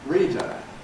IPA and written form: ˈriːdə (reader)